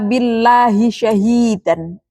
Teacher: lafaz Allah dibaca tarqiq atau tipis karena didahului oleh kasroh. Ya, tentu lafaz Allah pasti lamnya dibaca panjang.